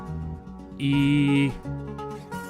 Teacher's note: pull your lips back and put your tongue up towards your hard palate without touching it